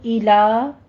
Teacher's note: آگے ایلا, ایلا میں ایلو نہیں کہنا, ایلا حمزہ کی آواز کے ساتھ لام پر فتحہ قائمہ ادا کرنی ہے